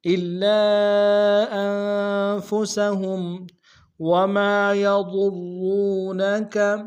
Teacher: انفسہم میں نون ساکن غنہ کریں گے